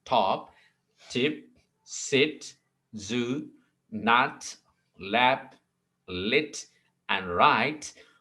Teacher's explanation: these are sounds formed with the front part of the tongue on the alveolar ridge. अब alveolar ridge में क्या होगा, जो front part of tongue जो है वो उनके साथ मिलकर जो है ना साउंड प्रोड्यूस होगा. · The initial sound in top, tip, sit, zoo, nut, lap, lit and right are all alveolars